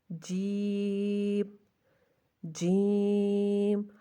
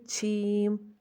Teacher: جیم کو ادا کرنے کے لیے زبان کے درمیان کو درمیان تالو سے لگا کر باریک آواز میں ادا کریں، یعنی کہ ہمارے جو زبان ہے وہ درمیان سے جو ہے وہ تالو کی طرف اٹھ جاتی ہے، ٹھیک ہے۔